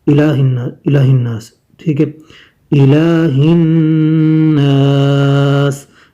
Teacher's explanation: لام کھڑی زبر کو تھوڑا سا لمبا کرتے ہیں، بہت زیادہ نہیں